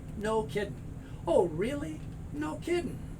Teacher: And with this, these ing sounds are usually ing, like no kidding. Very often you'll just hear no G.